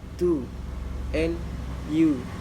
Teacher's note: The next one is u. It called high back rounded tense vowel